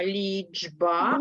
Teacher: Але перед дзвінким б він вимовляється дзвінко як дж